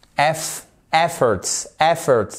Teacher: Accentuation sur les trois premières lettres, le E et les deux F.